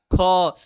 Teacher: पर उच्चारण दृष्टि से ख मतलब ह की हल्का मात्रा आती है, हकार की मात्रा आता है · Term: महाप्राण